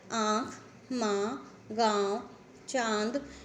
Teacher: अनुनासिक स्वरों के उच्चारण में मुंह से अधिक तथा नाक से बहुत कम सांस निकलती है। इन स्वरों पर चंद्र बिंदु का प्रयोग होता है, जो कि शिरोरेखा रेखा के ऊपर लगता है।